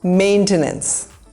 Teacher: This is maintenance. The emphasis is on the first syllable, maintenance.